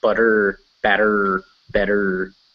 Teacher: In England, they don't really say the R, but in America, it's butter, batter, better.